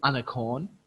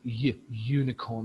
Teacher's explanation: so sometimes there's a ye sound before the you